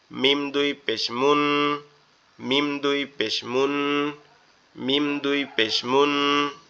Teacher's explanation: মিম আমাদের দুই ঠোর থেকে উচ্চারিত হবে একসাথে দুই ঠোর লেগে